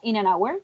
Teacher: the nucleus would be hour, and then we don't have any stressed syllables before hour